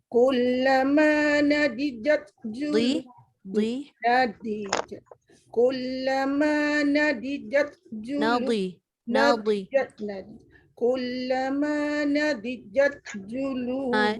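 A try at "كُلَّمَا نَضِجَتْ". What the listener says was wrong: Dia yang tebal bukan jim, dia jangan nadijat. Dia terbalik nadijat.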